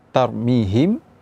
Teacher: ketika mim sukun bertemu dengan ba yaitu dengan tidak meninggalkan rongga pada kedua bibir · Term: Ikhfa Syafawi